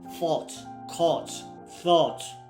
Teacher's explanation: Words that end in O U G H T are pronounced with a long O sound plus a clear T.